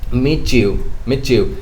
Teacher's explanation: ch sound with the blending of the ta and ear so when ta and yeah blends it becomes cha